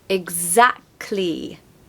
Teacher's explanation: So the second syllable is stressed